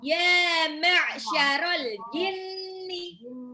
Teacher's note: ainnya harus dimasukin ke tenggorokan tengah. Kalau enggak nanti ya ma'syarol.